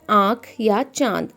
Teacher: अनुनासिक इसका उच्चारण मुख नासिका से किया जाता है तो जब हमारे मुंह और नाक से आवाज आती है तो